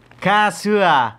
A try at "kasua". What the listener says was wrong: A-nya jangan terlalu dibaca. Kasua gitu.